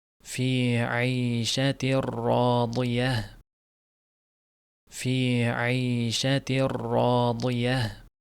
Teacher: Bu yerda ayshatir rodiyah deb o'qilinadi. Ayshatin deb tanvin bilintirilmaydi. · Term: g'unnasiz idg'om